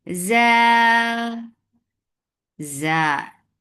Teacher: Sharp sound, make it 4 counts long because this is mad munfasil jais. · jim is majhura letter, so there should not be any flow of breath or sound.